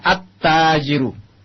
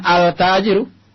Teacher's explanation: Antum temukan attajiru alif lam lamnya masuk ke huruf yang selanjutnya lamnya melebur dengan huruf selanjutnya tajir maka ditasdid karena lam asalnya tadi mati bergabung dengan Ta Maka menjadi tasdid sehingga alnya tidak jelas akan tetapi dia masuk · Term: huruf Syamsiyah